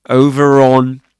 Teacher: The thing is that in this case, the over is followed by another word beginning with a vowel sound, specifically on. Okay, so in this case, in this accent, they would pronounce the r sound. They say over on.